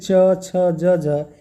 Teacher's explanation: जिन व्यंजनों के उच्चारण में पहले स्पर्श फिर संघर्ष की स्थिति हो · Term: स्पर्श संघर्षी